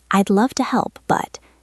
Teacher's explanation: Notice I leave a little pause after but.